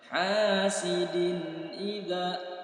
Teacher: tanwin kasroh tain bertemu dengan huruf hamzah, terjadi hukum izhar halqi, ya dibaca jelas langsung masuk huruf hamzah. Hasidin idza, tanpa ada dengung.